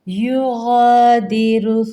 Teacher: را کے اوپر پیش ہے، اس کو پر پڑھیں گے